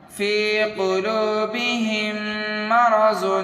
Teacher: یہاں پر دو میم ہے، میم کو میم سے غنہ کرنا ہے اور ملا کر کے پڑھنا ہے۔